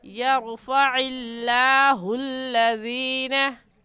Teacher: लफ्ज़ अल्लाह को बारीक करके पढ़ते हैं। और बारीक करने का तरीका कि आपके दोनों होंठ फैल जाए।